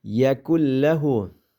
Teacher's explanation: Yakun degandiki nunni lamga idg'om qilib, g'unnisiz holatda o'qiymiz.